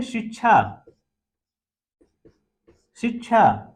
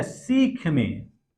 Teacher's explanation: ये जो तालव्य श है इसका रूप परिवर्तित होकर किस में हो जाता है? दंत श में हो जाता है।